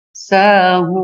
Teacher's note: Ini tadinya sahuna, dibaca sahun, dibaca 2, bisa juga sampai 5 harokat. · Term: mad arid lis sukun